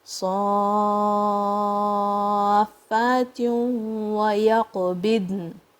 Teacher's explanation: It's going to blend into the waw with gunna. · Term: idgham